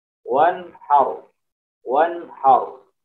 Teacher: ada bacaan nun sukun bertemu dengan ha, maka dibaca izhar jelas